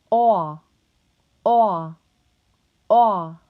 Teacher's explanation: To produce the aw sound, the back of the tongue will be placed in the low mid position of the mouth. Your lips will be rounded and your tongue should be tensed. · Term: open O